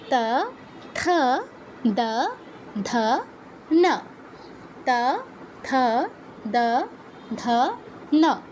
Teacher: তারপরের যেই বর্গটা আছে এটা খুবই সহজ, এটা হচ্ছে ত বর্গীয় অক্ষর, এদের উচ্চারণ স্থান হচ্ছে দন্ত। ওই উপরের পাটির দাঁতে জিহ্বা স্পর্শ করবে।